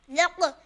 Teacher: یہاں قاف پیش جزم ساکن ہے تو اس وجہ سے ہم اس میں قلقلہ کریں گے۔ ذق، قاف دال زبر قد، یہاں دال پہ بھی جزم ساکن ہے تو اس وجہ سے اس پہ بھی ہم قلقلہ کریں گے، قد۔